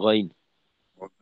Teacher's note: গইনে এখানে রিখওয়ার হরফ হওয়ার কারণে আওয়াজ চালু থাকবে